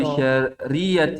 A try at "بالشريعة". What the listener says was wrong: enggak, mana ainnya enggak, saya dengar bisyariati. Kan enggak ada ainnya.